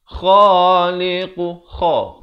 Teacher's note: kha, makhrajnya di hujung kerongkong ini.